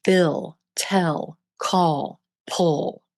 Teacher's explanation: Notice how these non-moving vowels merge with the L sound, becoming one. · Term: final L